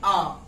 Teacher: आ ही एक ऐसा वर्ण है जिसको बोलते समय हमारा मुख पूरा खुल जाता है, आ। मुख को बंद करके हम आ नहीं बोल सकते तो बोलते हैं आ। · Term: विवृत स्वर